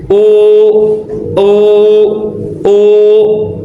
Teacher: tatkala wau monyong u u u betul-betul monyong